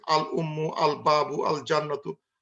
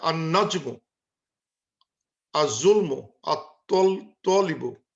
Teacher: কিন্তু উচ্চারণ করার সময় লামটা হারা যাচ্ছে